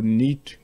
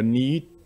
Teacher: suivant que le I, la voyelle I soit longue ou courte, ça change le sens du mot